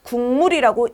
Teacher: 국물이라고 이응으로 바뀌어서 읽히는 거죠 이걸 우리가 뭐라고 말을 하냐 바로 자음 동화라고 말합니다 자음동화 중에 · 자음동화 중에 정확하게 말하자면 비음끼리 만나게 되는 것이니까 비음화죠. 자음동화 중 비음화에 해당됩니다.